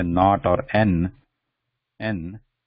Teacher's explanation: right when you say not or n n the that tongue the tip of the tongue is touching the back of the teeth